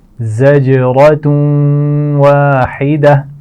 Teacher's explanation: زا کے مخرج کا خیال رکھیے، اس کی آواز میں سیٹی ہوگی